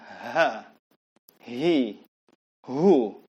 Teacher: Ha di bawah tenggorokan dan dikeluarkan dengan dorongan udara dari dalam.